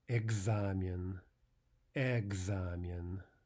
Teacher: This word, of course, begins not with yeah, but with ah.